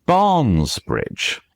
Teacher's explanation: And if you say Barnes Bridge, Barnes Bridge is something which uh the English language really hates. It's two stressed syllables right next to each other cuz English wants to be I am big all the time.